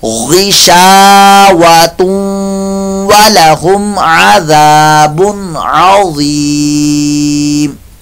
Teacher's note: کی آواز. اگر آپ ملا کر یہاں پڑھنا چاہیں تو پھر تنوین کے بعد واو آ رہا ہے، ادغام مال غنہ کا قاعدہ، یہاں غنہ کریں گے